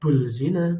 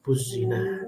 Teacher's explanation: Di sini penekanannya adalah ada alif lam atau al-ta'rif bertemu dengan huruf za. Di mana ketika ada al-ta'rif bertemu huruf za, maka huruf lam tidak terbaca, dimasukkan ke dalam huruf za. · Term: idgham syamsiyah